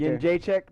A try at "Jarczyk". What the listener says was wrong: no N in there. There's not an N in that name. Jarczyk.